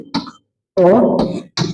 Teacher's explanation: विपरीत स्वर किसे कहते हैं, जिसके उच्चारण में मुख आधा खुलता है, ठीक है, पूरा नहीं आधा खुलता है, उसे हम अर्ध विपरीत कहते हैं